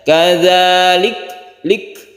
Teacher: ada suara kafnya itu ya, bukan qalqalah, tapi dia itu hamas ya